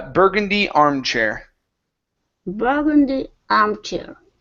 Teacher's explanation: the stress is at the beginning instead of at the very end